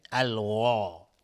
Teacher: الف هم تابع غین غلیظ تلفظ میشه حکم استعلاء به خودش میگیره